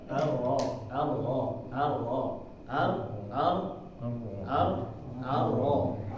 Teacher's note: takrir ini kita jaga getarannya tetap sedikit bukan diamalkan benar-benar harus bergetar harus arro nah ini keliru ya